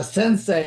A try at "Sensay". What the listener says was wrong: Sensay, just the way it's pronounced. Sensei, S-A-Y.